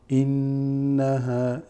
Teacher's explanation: The noon here again has غنة, which means you hold it. إنها, and you make a slight nasal sound to it.